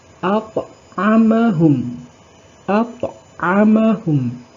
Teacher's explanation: Jadi bunyi pantulannya kecil, berbeda dengan qalqalah kubra yang pantulannya besar. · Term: qalqalah sughra